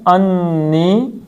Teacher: نون کو کھینچنا ہے ذرا کیونکہ اس کے اوپر شد ہے